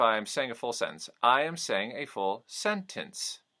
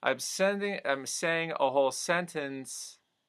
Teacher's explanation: The sentences don't really end as sentences. They end almost like dangling commas.